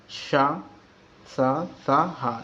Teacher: वे व्यंजन जिनका उच्चारण करते समय वायु रगड़ खाकर कुछ गर्म हो जाती है, तब मुख से बाहर निकलती है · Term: ऊष्म व्यंजन